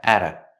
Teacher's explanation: The T in at is a fast D because it's between vowels.